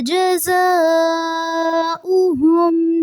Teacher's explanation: جزاؤہم زا میں شدت رہے گی اور مد ہوگی